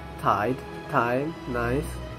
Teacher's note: this diphthong begins with an open vowel which is between front and back